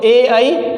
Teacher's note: इसके अलावा अगर अपन बात करते हैं तो ए, आई ये कंठ तालव्य, यानी कि ए और आई का उच्चारण करते समय जो ध्वनि है वह 2 जगह से निकलती है, एक कंठ से और एक तालव्य से। इनको उच्चारण करते समय ध्वनि कंठ से निकलती है और हमारी जीभ का जो अग्रभाग है वह तालु से टच होता है, इसलिए इनको कंठ तालव्य कहते हैं।